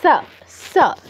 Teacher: ত যেভাবে উচ্চারণ করেন, জিহ্বা উপরের পাতি দাঁতে টাচ করে উচ্চারণটা করতে হবে, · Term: দন্তস্ব